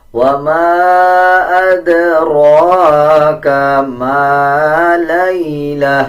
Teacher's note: الف کے اوپر چھوٹا مد ہے، 3 سیکنڈ لمبا کیا جائے گا. دال کے اوپر قلقلہ کریں گے.